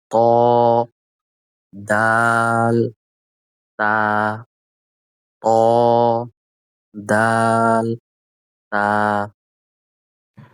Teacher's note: ১১ number মাখরাজ জিহ্বার আগা সামনের উপরের দুই দাঁতের গোড়ার সঙ্গে লাগিয়ে